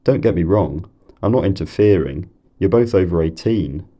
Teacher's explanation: I'd use a lot of what are called Full rise nuclear tones · You're both over 18, you can hear the full rise in wrong, interfering, 18, because those are the nuclei, the nuclear syllables and the tails of those intonational phrases. I use these so-called full rise nuclear tones to signal that I'm not finished speaking, that I want to carry on.